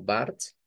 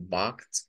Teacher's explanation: Se puede decir con una R como Bart, se puede decir con la R gutural como Bart